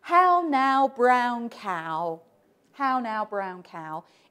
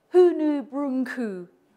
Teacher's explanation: how now brown cow in Scotland people still say hu Bru with the original pronunciation of the vowel because in Scotland they didn't have the Great Vowel Shift